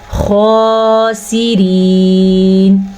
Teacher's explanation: سین باریکی سے اور سیٹی کی آواز کے ساتھ پڑھا جاتا ہے، خاسرین۔ را کو باریک پڑھیں گے اور یا مدہ بھی ادا کریں گے، حالت وقف کی وجہ سے نون پہ ساکن آ جائے گا، خاسرین، اس طریقے سے۔